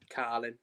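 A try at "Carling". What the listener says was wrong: Oh, you didn't say it. You didn't say it with the G. You didn't say it. No, like Carlin.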